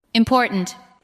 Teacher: The second part receives the strongest beat. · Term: word stress